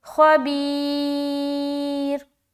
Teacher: stopping کی صورت میں را باریک رہے گی کیونکہ اس سے پہلے یا ساکن ہے